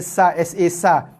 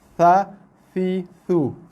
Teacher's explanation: bunyinya sangat nipis, halus. Dan keluar bersama-samanya dengan sedikit hembusan nafas. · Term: huruf tha